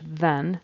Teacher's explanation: he has the Z for a th in the front of then needs to be a voice th